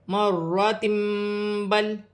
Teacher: دو زبر دو زیر دو پیش کی آواز کو میم سے بدل کر غنے کے ساتھ ادا کیا جائے گا ، یہاں اقلاب کا قاعدہ ہے، جیسے مراتم بل، میم ساکن